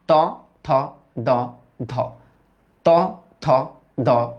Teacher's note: তোমার জিভের যে ডগাটা আছে না? এটা তোমার উপরের পাটি দাঁতের সাথে বাড়ি খাবে। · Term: দন্ত